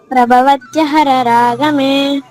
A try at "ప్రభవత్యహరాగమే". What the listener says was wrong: ఎనిమిది అక్షరాలే ఉంటాయమ్మా మీరు తొమ్మిది అక్షరాలు పలుకుతున్నారు